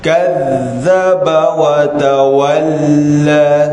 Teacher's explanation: Kazzaba, bila ada tasdid, ada nabdah, disebutkan sebagai nabdah, penekanan suara.